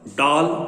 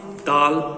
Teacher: ड से डाल मूर्धन्य वाला अर्थ है पेड़ की शाखा। दा से दाल दंत वाला खाने का दाल।